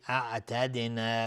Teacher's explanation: دال قلقله میخواد چون ساکنش کردیم اینجا، چون ساکنه در اصل.